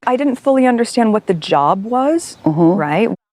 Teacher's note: with her Rising intonation she's asking not stating